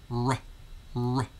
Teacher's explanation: there's a slight short u sound following the r sound